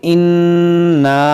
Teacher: यहाँ पर देखें यहाँ काफ मुशद्दद है, नून मुशद्दद है, यहाँ पर नून मुशद्दद है, तो यहाँ गुन्ना करेंगे।